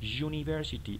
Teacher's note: Esta palabra, a pesar de que empieza con u, diríamos que la regla nos dice que empieza con an, porque es an cuando la palabra inmediata empieza con consonante, pero esta palabra se dice university. El sonido que hace esta u es como de una consonante. Por esa razón decimos a university, no an university, a university.